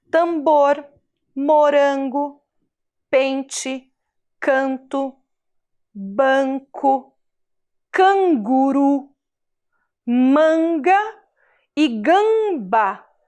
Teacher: todas essas vogais mais a letra m ou a letra N vão dar esse som que sai pelo nariz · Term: som nasal